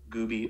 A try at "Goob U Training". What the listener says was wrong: So that was Goob U Training, not Gooby Training. Yeah, it sounded like